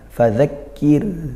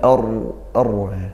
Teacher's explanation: Huruf sebelumnya kaf berharokat kasroh, maka dia dibaca tarqiq, dibaca tipis, turunkan pangkal lidahnya.